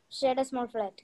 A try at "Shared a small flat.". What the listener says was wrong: Perfect. That's how it is.